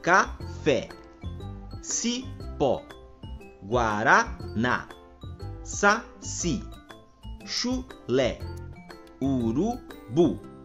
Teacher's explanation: possuem a última sílaba como sendo a sílaba tônica Ou seja a última sílaba é a sílaba mais forte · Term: palavras oxítonas